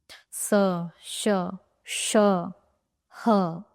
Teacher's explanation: एक ऊष्म हवा बाहर आ रही है, इसलिए उन्हें कहा गया है ऊष्म व्यंजन